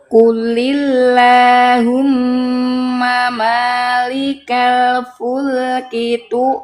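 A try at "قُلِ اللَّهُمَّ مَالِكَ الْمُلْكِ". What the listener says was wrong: Bukan fulki, mulki. Itu mim itu.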